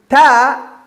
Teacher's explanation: the tongue is touching the upper parts of the teeth